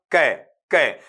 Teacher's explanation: जो अपना consonant sound है वो सॉफ्ट पैलेट को टच करेगा, और कहां पर, back of the tongue touch करेगा आपका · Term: वेलर